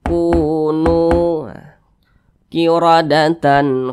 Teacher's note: Mad Thobi'i atau mad ashli panjangnya dua harakat atau kira-kira dua ketukan